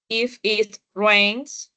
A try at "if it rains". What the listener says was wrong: If it rains. If it. Une esas palabras if y it.